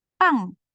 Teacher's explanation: Bukan pang, nggak pakai H ya. Ini kan P-nya yang tebal ya.